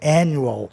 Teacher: Mas a sílaba tônica fica na terceira casa silábica. Há 2 consoantes, o A soa entre A e E. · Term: ditongo crescente